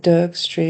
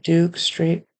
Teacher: the O was a little off the oo part it sounded like his tongue was too far back